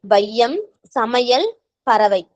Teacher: வையம் சமையல் பறவை என சொற்களுடைய முதல் இடை இறுதி ஆகிய இடங்களில் வரும்போது தனக்குரிய இரண்டு மாத்திரை அளவிலிருந்து குறைந்து ஒளிக்கிறது. இவ்வாறு குறைந்து ஒளிக்கும் ஐகாரம் ஐகார குறுக்கம் எனப்படும் ஓகேங்களா அந்த ஐகார குறைந்து ஒளிக்கறதுக்கு பேர்தான் ஐகார குறுக்கம்.